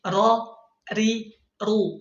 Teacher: ketika fathah dibuka mulutnya, ketika kasrah rahangnya turun, ketika dhammah munyung ya bibirnya, kedua bibirnya.